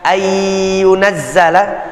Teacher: Kalau tadi nunnya bertemu dengan ya, ayyunazzala, kalis sudah, nggak kelihatan lagi nunnya. Yang terdengar adalah huruf ya-nya.